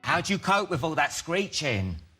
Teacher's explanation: when you encounter a D plus a Y in English, they often morph into a J sound. The word do lost its vowel sound here and combined with U, it gives a do sound.